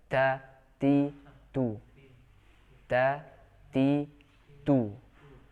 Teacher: kita juga harus membaca dengan sifat syiddah ya, kuat dalam huruf ta, dan juga sifat hams, yaitu menghembusnya udara.